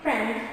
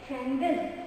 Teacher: we add a vowel, again the schwa, between the clusters to make it easy for us to pronounce the word